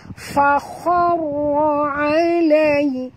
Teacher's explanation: Fa khar, huruf kha tebal, ra juga tebal. Ra ini apabila dia mati, huruf sebelumnya baris atas pun tebal.